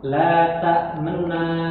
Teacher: cara baca raum itu harakat dhammah dibaca tidak sempurna